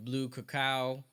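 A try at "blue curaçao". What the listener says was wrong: I think it's blue curacao. Yeah, curacao, yeah. Yeah.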